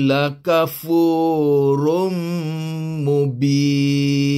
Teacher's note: Sebab dia mad arid li sukun. Kita nak berhenti kat sini, bunyi nun hilang, tinggal bin. Dan bin ini pula B dia yang panjang, nun dia datang kemudian, mubin.